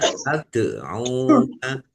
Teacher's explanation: Ya fathah alif mat tobi'i. Tad'una dal sukun. Bacaan kolkolah. Dibaca memantul, ditampakkan pantulannya. Tad'una. Ain domah wawu sukun mat tobi'i.